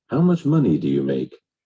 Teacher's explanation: with information questions, as you well know, the intonation actually drops.